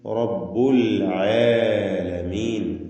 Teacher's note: റാഇനും തഫ്ഖീം കൊടുക്കുക, പൂർണ്ണമായ തഫ്ഖീം.